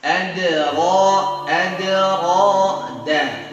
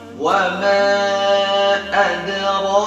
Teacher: Karena ini qalqalah sughra ya, cara pengucapannya bukan adra, salah, tapi wa ma adra, langsung mengucapkan huruf ra, enggak putus.